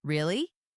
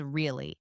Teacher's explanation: really with a rising tone for surprise or asking for confirmation versus really with a falling tone for simple agreement or understanding